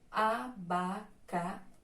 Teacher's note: Então, xi é a sílaba tônica oxítona, ou seja, a última sílaba tônica.